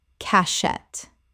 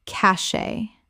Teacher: 2 syllables with the T completely silent.